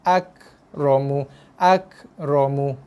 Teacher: Ada embusan nafas yang keluar tu dengan kadar yang sikit saja. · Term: Kaf mati